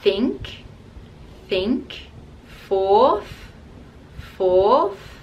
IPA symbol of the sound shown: θ